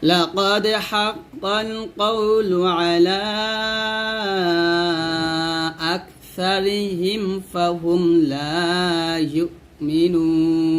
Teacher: এখানে ইউমিনুন বলতে হবে, এই হামজা উচ্চারণ করতে হবে